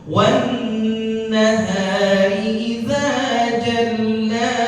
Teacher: Wan nahari nunnya kita tahan. Gunnah musyaddadah.